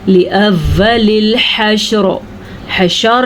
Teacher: جناب شین پہ زبر تو نہیں ہے، شین پہ ساکن ہے، شین کو ہم نے ساکن ہی پڑھنا ہے، ہم نے پڑھنا ہے حشر، حشر، اور را کو پر بھی پڑھنا ہے، را کو ساکن بھی پڑھنا ہے